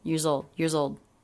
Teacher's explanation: The plural S in years is pronounced as a Z, and it links into the next word, zold, years old.